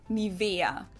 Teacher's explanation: In German, we say Nivea, Nivea. So the emphasis is on the E, Nivea. Okay, listen.